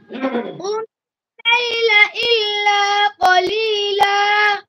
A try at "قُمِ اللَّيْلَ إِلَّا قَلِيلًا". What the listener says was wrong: মুখ সামনে এসে পড়ে কফের মধ্যে কলিলা কলিলা হয়ে যায়, এটা হবে না।